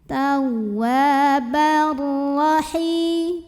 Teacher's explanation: Lalu berikutnya ada idgham bila gunnah karena ada tanwin fathah yang bertemu huruf ra. Maka tanwin fathahnya masuk ke ra, bar tanpa didengungkan, jadi cukup ditekan.